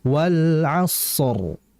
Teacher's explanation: Kemudian berikutnya pada ayat yang pertama, wal asror sadnya itu dialirin dulu jangan langsung wal asr. Kalau wal asr berarti sifat rikh shadnya hilang.